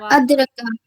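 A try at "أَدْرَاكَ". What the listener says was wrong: रा को खींच के पढ़िएगा, रा खड़ा जबर रा अदरा।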